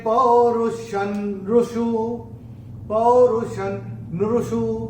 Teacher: श के ऊपर जो अनुस्वार आ रहा है उसके बाद का अक्षर है न, और अनुस्वार के बाद जब न आता है तो अनुस्वार का उच्चारण होगा न